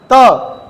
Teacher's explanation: त दांत से टकरा गई, दंत है।